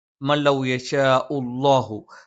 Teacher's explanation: ഷ ഉച്ചരിക്കുന്ന സമയത്ത് നാവിന്റെ മധ്യഭാഗത്തിന്റെ 2 അറ്റങ്ങൾ മേലെ അണ്ണാക്കിൽ സ്പർശിക്കുകയും നാവിന്റെ മധ്യഭാഗം അങ്ങനെ കുഴിഞ്ഞു കിടക്കുകയും അതിലൂടെ വായു സഞ്ചരിക്കുന്ന ഒരു രീതിയിലാണ്